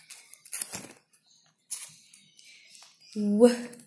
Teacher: Place of articulation bilabial and manner of articulation approximant.